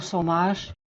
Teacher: She got the J sound in magic. She didn't get the CH sound at the end of much. She said mush, more like a mush, so it's an SH kind of a sound.